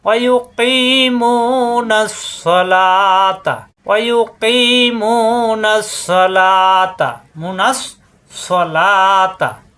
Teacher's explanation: এখানে আলিফ লাম খালি পড়া লাগবে না, নাস পরে সদ্যে জবর স, সা হবে না কিন্তু, আকার প্রকাশ পাবে না, স ইস্তিলার হরফ